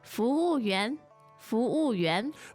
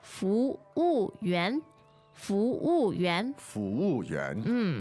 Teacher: The tone's there. Second, fourth, and second. Second, so 242.